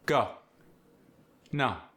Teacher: The long O sound, as in go in no, gets the ah sound, like AW.